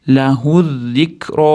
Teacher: o'rtadagi alif ham, lam ham o'qilmaydi.